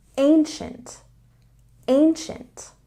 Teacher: There's a stress on the first syllable, and when we have IE after C in this word, it becomes the sh sound